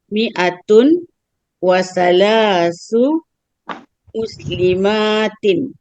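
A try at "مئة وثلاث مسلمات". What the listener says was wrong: Bagus, bagus.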